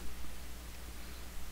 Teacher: E o vi é o mais forte, então é uma paroxítona